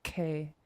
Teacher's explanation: When you make a K sound, you close the gap all the way between the tongue and the roof of your mouth. K. It's a sharp sound.